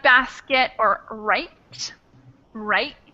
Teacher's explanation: basket usually doesn't have a full T sound but it's kind of a stop in your throat · They don't get that full T sound at the end, but kind of like a half T sound that gets closed off in your throat.